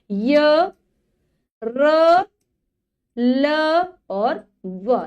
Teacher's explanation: ऊपर जाती है हमारी जीभ लेकिन पूरी तरीके से ऊपर वाले भाग को स्पर्श नहीं करती। ये बीच में स्थित होती रहती है। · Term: अंतस्थ व्यंजन